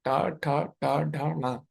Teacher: जहाँ पे टा ठा डा ढा आप बोल रहे हो वहीं पे ना बोलिए, टा ठा डा ढा ना, वहीं पे जीवा को रखिए, तो आप ना का सही से उच्चारण कर पाओगे। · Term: मूर्धन्य